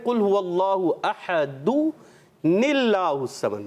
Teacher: تو پھر ہم پڑھتے ہیں حمزہ وصلی بھی ہاں حمزہ وصلی اس کو کہتے ہیں. وصلی یعنی درمیانے کلام میں، کلام کے بیچ میں جو حمزہ آ جاتا ہے وہ گر جاتا ہے · نون کو زیر دے کر اور اللہ کے نام سے ملا دیتے ہیں. اور وہ الف جو ہے جس کو ہم الف کہتے ہیں یہ ہوتا ہے در حقیقت حمزہ.